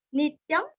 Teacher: नी के ऊपर आघात, अनुस्वर का उच्चारण आधा म